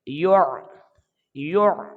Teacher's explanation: یا کو گول آواز کے ساتھ پڑھیں گے اور آگے عین کے ساتھ ملائیں گے